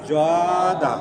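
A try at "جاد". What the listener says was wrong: জ না হবে জাদা, নরম হবে জা জা।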